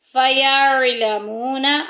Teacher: आइन को हम वस्ते हलक से अदा करेंगे